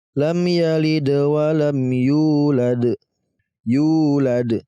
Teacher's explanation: huruf ya yang berharokat dhammah dan bertemu dengan wawu sukun. Maka kita panjangkan 2 harokat ataupun 2 ketukan. Ya. Karena ini masuk dalam kategori mad tabi'i.